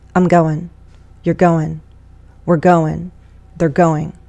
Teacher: relax speech you're going to hear reduction vow sounds get reduced you do not hear full sounds often things are reduced to schwas